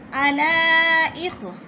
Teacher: عَلَىٰ اخ مد منفصل، حروف مدہ کے بعد حمزہ دوسرے کلمے میں ہے تو مد منفصل ہے، 4 الفی مد ہے، 4 حرکات کے برابر ہم نے اس کو کھینچ کر پڑھنا ہے